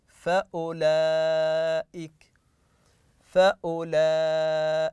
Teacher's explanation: هذه الدائره على ان الحرف لا ينطق لا في الوصل فاولئك يعني لا نقرا الواو المد فقط ناتي بالضمه